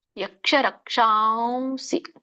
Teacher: ಯಾಕಂದ್ರೆ ಸ ಇದೆ, ಸಾನುನಾಸಿಕ ವ ಬರುತ್ತೆ ಅಲ್ಲಿ. ರಕ್ಷಾಂಸಿ ವ ಹೇಳ್ಬೇಕು ಮುಗಿನಿಂದ